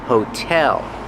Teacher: hotel, put the stress on the second syllable.